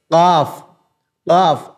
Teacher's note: जबान की जड़ यानी जीभ की जड़ उसके मुकाबिल ऊपर का तालू यहां हम जब चिपका देते हैं अपनी जबान को तो निकलता